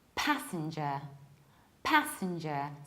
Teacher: I stress the very first syllable, pa, and then I reduce sin. Passenger. I also reduce the last syllable.